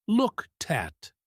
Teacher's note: The t from looked jumps over to the at the vowel in at becomes a schwah